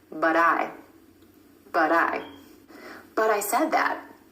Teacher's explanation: A recap on flap T, or the D sound, you're going to hear this quick D sound when the T comes between 2 vowel sounds, whether that's within a word or in between 2 words. · Instead of that true T at the end of the word but, try the flap T